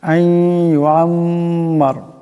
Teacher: মিম মুশাদ্দাদের একালিক পরিমাণ গুণনা হবে